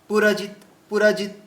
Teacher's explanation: পুরজিতে দেখুন তিনটেই হ্রস্ব চিহ্ন আছে, এই জন্য খুব দ্রুত যেতে হবে